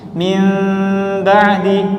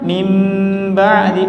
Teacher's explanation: Jadi bibirnya hanya disentuh saja. Kalau kita tidak menekannya, itu akan menjadi ikhfa. Suara mimnya itu tersembunyi, samar. Min ba'di. Tapi kalau kita tekan min ba'di, menjadi izhar, jelas.